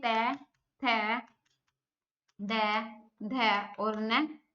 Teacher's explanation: दंत से। जीभ जो है दांतों को आके लगती है। ठीक है, तो वो दंत से बोले जाएंगे।